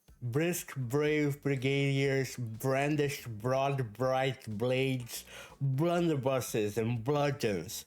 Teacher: So a lot of b, which is a bilabial plosive voiced sounds.